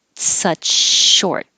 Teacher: you're going from a ch such to a sh with continuous airflow for short so it doesn't have to be a perfect break in between